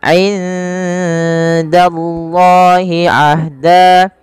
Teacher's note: Kemudian indallahi ahda, nun mati bertemu dengan dal, samarkan nunnya kepada huruf dal karena ia ada bacaan ikhfa